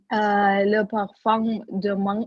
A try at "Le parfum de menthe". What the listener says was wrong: Опять М убирайте.